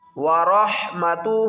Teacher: را کو ہا کے ساتھ ملائیں گے، ہا یہاں پر نہیں پڑھیں گے ، را ہا زبر رح، ورحمتہ لکنتم، کاف کو نون کے